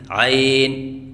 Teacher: بعض بچے عین کی ادائیگی کے وقت شروع میں حمزہ پڑھتے ہیں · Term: شروع میں حمزہ پڑھنا